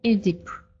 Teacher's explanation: между двумя гласными т меняется на д